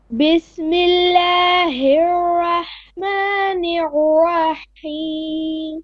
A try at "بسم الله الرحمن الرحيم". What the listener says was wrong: Better.